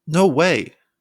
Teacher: your voice rises again on way to express shock